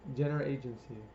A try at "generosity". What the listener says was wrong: You're saying the G way too pronounced. You have to remember that sometimes you have to say it differently each time so that it can sound a little different.